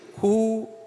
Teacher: எனவே தான் அங்கே குறுகிய வாயுடைய இக்கோடு சேர்ந்து வரக்கூடிய குறைந்த அளவு காற்றோடு அந்த ஊவை சேர்த்து ஹூ என்று ஒலிக்கின்றோம் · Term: குற்றியுலவரம்